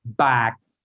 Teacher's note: they don't have any aspiration at the end of their um consonants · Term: dead yeah consonant